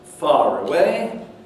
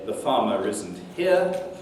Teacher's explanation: it's where you have an historic final r surfacing across word boundaries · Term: link